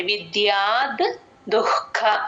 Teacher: దు పక్కన విసర్గ H sound లాగా చెప్తాము క ముందు ఎప్పుడు విసర్గ వచ్చినా సరే హెచ్ సౌండ్ విత్తం విద్యా దుఃఖ